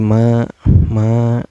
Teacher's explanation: cara bacanya dipanjangkan dua harkatnya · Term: Mad Thobi'i